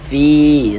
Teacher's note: Maka huruf yang memiliki harokat kasroh dibaca panjang. Sebenarnya fi kita baca panjang, mad tabi'i panjang 2 harokat. · Sebelum ya sukun ada ini, ada harokat kasroh nih. Maka huruf yang memiliki harokat kasroh ini kita baca panjang, sehingganya fi kita baca panjang. Ada huruf ya sukun sebelumnya ada harokat kasroh.